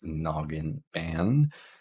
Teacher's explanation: we have air coming through our nose when we pronounce the n Sound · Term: nasal sound